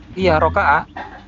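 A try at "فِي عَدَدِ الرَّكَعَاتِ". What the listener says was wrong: Rakaati jangan tin. Ada alif lam.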